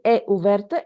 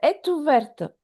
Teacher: Again, here la liaison. After T, we have a vowel. We don't say è ouverte, est ouverte altogether. Est ouverte.